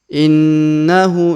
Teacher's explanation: huruf Hunya kita panjangkan dua harakat ya karena terdapat tanda panjang dua harakat di atasnya ya innahu ini harakat u Terbalik ya kalau u biasa seperti